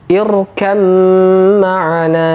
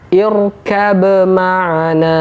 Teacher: ba bertemu dengan huruf mim di sini juga berlaku hukum idgham huruf ba sama sekali tidak dibaca karena dimasukkan ke huruf mim sehingga Mim nya dobel